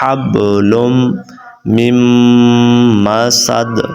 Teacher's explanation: اگر آپ نے میم کو نون کے ساتھ پڑھ دیا تو پھر یہ غلط ہو جائے گا. تو میم کو آپ نے میم کے ساتھ ملانا ہے، میم کو نون کے ساتھ نہیں ملانا